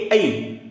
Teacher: कंठ तालव्यामध्ये ए आणि ऐ बघा उच्चार कुठे होते ए ऐ टाळू आणि कंठ याचा उच्चार होतोय · कंठ आणि टाळू या दोन अवयांचा एकत्रित उच्चार होतो